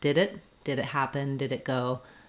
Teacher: I do let that D out. It just links to the next word, and it basically sounds like it's all connected. So it's like did it. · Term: release D